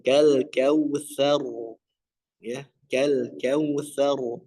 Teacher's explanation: Kemudian rnya yang terakhir itu ditebalkan.